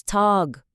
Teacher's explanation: Buradaki tag derken a'yı biraz uzatıyoruz.